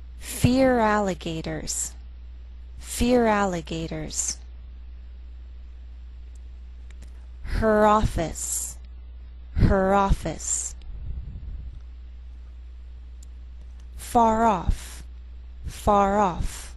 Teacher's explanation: it in normal speech to speak smoothly we connect our words the r will lead into the next word which begins with a vowel sound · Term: linking